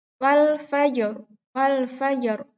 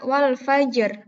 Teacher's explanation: ketika pas dia di wakafkan dibaca Wal Fajr bukan Wal Fajar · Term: waqof